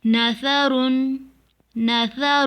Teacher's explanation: سا کی آواز باریک اور نرم ہوتی ہے